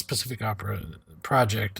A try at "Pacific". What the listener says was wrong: Pacific, but every time you say it, I think specific, and you're mispronouncing it. It's Pacific.